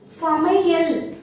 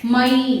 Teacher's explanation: அதாவது ஒரு குறில் எழுத்தை ஒலிக்கும் பொழுது ஒரு மாத்திரை எடுத்துப்போம்ல அது மாதிரி ரெண்டு மாத்திரை அளவு ஒலிக்க வேண்டிய மை என்ற எழுத்தானது இப்ப என்ன ஆகுது குறைந்து ஒரு மாத்திரை அளவாக ஒலிக்கும்